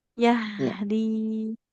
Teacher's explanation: Di sini ada huruf ha yang harus mengalir dulu suaranya